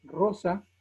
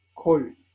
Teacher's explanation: la kamesh hataf, que vendría a ser una O muy cerrada, como en la palabra rosa, que es una O cerradita, y esa estaría ejemplificada con la palabra hebrea kol, que es traducido es todo.